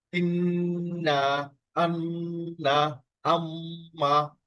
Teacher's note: গুন্না, নাকের ভিতর থেকে উচ্চারিত হবে।